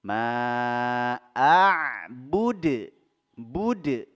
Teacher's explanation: Langsung kita masukkan huruf dal, kita sukunkan huruf dalnya dan kita pantulkan. Karena huruf dal termasuk huruf qalqalah, huruf mantul. Ma'abud, bud langsung mantul.